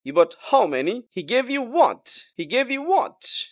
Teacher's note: তাহলে এটা সারপ্রাইজ বা ইমফেটিক কোশ্চেন্স হয়ে যায় এবং টোনটা রাইজিং টোন হয়